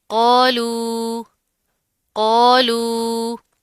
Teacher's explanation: قوف موٹا پڑا جائے گا، ساتھ کا الف بھی موٹا پڑا جائے گا، مد ہے تھوڑا سا کھینچ کر لمبا کر کے پڑھیں گے.